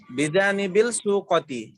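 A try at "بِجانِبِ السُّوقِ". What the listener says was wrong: বিজানিবি সুকি, বিজানিবি সুকতে না সুকি, বিজানিবি সুকি বাজারের পাশে।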